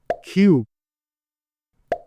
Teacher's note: ফ ভি ঠিক ইংরেজি হচ্ছে V কিউ কিউ নট কিউ কারণ ইংরেজিতে ক উচ্চারিত হয় না হয় খ তাই বলতে হবে কিউ R R S T not টি ইংরেজিতে